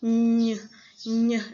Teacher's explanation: NY. Bunyinya di mana? Antara sekitar hidung dan mulut.